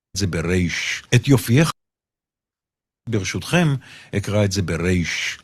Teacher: He's going to say the letter resh like a trill instead of resh, sounding more Sfaradi to people.